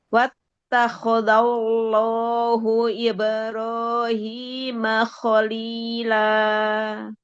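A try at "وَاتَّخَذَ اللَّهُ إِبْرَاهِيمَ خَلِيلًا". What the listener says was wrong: Wattakhadha, kho-nya coba ditebalkan. Wattakhadallahu Ibrahim khalila.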